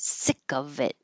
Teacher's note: I do keep the V because there's a vowel after it